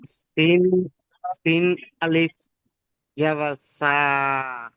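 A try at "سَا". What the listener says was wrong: ভাইজান বক্ষরের যে টান আছে তিন আলিফ, সেগুলো পড়বেন তো। সিন আলিফ একদম বন্ধ করেন, আমি কেমন পড়ছি সব ভাইজান শুনে নেন। সিন আলিফ জাবার সা। এমন পড়েন।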